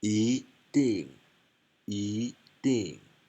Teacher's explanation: before the fourth tone it becomes second